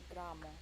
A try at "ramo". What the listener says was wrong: No. Ra. Like ra. Ramo. No. You are saying gra. Eta nie gra. Eta ra.